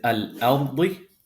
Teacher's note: because the ra has a sukoon, but the letter before it has a fatha, this sakin ra will be pronounced heavy. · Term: tafkhim